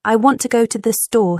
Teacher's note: American English emphasizes certain words in a sentence. For example, I want to go to the store stresses want and store.